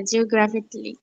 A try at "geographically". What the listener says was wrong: হ্যাঁ, এখানে কিন্তু অনেকে বলবে যে জিওগ্রাফি ক্যালি। এই ক্যালির উচ্চারণ কিন্তু হ্যাঁ, মানে CALLY, মানে জিওগ্রাফিকলি বানানটা হচ্ছে GEOGRAPHICALLY। জিওগ্রাফিক্যালি বলে সবাই, ঠিক আছে? মানে আমরা বাংলিশ কায়দায় উচ্চারণ করি, কিন্তু উচ্চারণটা হবে জিওগ্রাফিকলি।